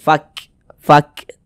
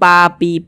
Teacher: Huruf fa juga salah satu huruf yang memiliki sifat hames. Jadi ketika kita mengucapkannya ada nafas yang mengalir ketika kita mengucapkannya.